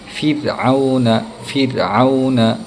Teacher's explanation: رو ترقیق کہتے ہیں رو کو ایک دم ہلکا اور لائٹ انداز میں پڑھنا، اور یہ اس وقت ہوتا ہے جب رو ساکن سے پہلے والے حرف کے نیچے زیر آ جائے یا پھر خود رو کے نیچے زیر آ جائے، تو اس وقت ہمیں رو کو ایک دم باریک اور لائٹلی پڑھنا رہتا ہے، جیسے فرعون فرعون۔